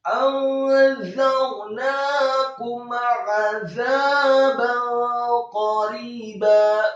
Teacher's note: Kata azaban, ain ditekankan kuat dari tenggorokan fathah, kemudian za-nya dibaca tipis fathah dua harokat, kemudian ba-nya dibaca fathah tanwin.